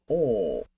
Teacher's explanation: this sound is not only slightly higher than the a sound it's also pronounced with rounded lips in other words we make a little o shape with our lips when we make this sound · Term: aw sound